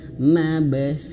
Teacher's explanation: Mab pantulkan dengan jelas